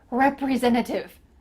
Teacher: you might notice that the t the first t in this word i'm cutting out